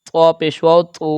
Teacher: واو مدہ کی لمبائی ایک الف کے برابر ہے اور واو کو ہم توا کے ساتھ ملا کے یعنی کہ